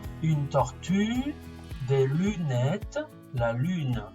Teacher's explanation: El sonido U. U, para decir U, decimos I, pero con los labios en posición de la U. Y así se sale U.